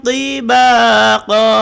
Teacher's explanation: Ujung lidah berada di gigi atas. Gigi atas bagian depan. Cuma dia tebal. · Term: ta tebal